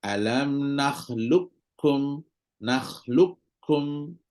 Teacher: kita tahu lebih kuat daripada Kaf ada qalqalahnya dan sebagainya tapi qaf tersebut akan dimasukkan secara seluruhnya ke dalam huruf Kaf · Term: Idgham Kamil